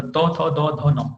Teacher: दंत में त थ द ध न यूज हो रहा है